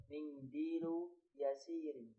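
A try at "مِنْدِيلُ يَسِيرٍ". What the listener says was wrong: Panjang pendeknya. Mindilu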